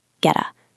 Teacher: Notice the T sounds a bit like a soft D here in American English or a crisp T in British.